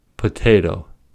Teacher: In potato, the P is aspirated because it is at the beginning of the word, and the T is aspirated because it's at the beginning of a stressed syllable.